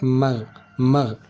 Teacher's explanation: saat kita baca mag mag ada seperti getaran di ujung kerongkongan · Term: Huruf ghin